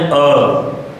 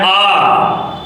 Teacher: जब हम बोल रहे हैं अ तो कम समय लग रहा है जब हम बोल रहे हैं आ तो अ से अधिक समय लगा